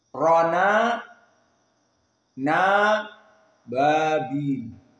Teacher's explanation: Maka takhrij dari kesusahan bertemu dengan hamzah ini dinaql. Dihilangkan hamzahnya dan harokatnya dimasukkan ke nun yang sakinah. Jadi tadinya toiron sukun nun, kemudian aba hamzah fathah, maka hamzahnya dihilang. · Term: an-naql